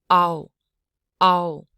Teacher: a real quick blend of ah and uh makes AO